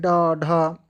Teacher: जिन ध्वनियों के उच्चारण में वायु झटके से बाहर निकल जाए उन्हें उपक्षिप्त व्यंजन कहा जाता है।